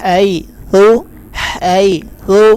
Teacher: حیث یہاں پر بھی یا لین ہے اور تا کے اوپر سٹ کی آواز پیدا نہیں ہوگی